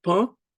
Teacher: the air that comes out of your lungs from their utterance passes through both your mouth and your nose. However, no distinct N sound is heard in their pronunciation. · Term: nasal vowels